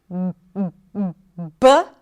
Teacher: the B which is the voiced consonant. So the air comes out the vocal cords are vibrating B and the air is released.